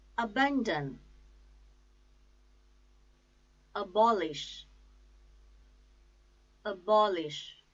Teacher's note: the stress is on second syllable